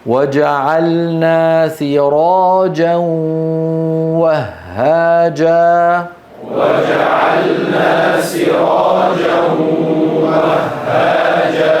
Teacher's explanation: لما نقول سراجا ننطق صوتين معا، صوتين مع واو من الشفتين وغنة من الأنف. إذا قال القارئ سراجا أتى بواو ولم يأتي بالغنة.